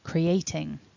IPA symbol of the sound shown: ŋ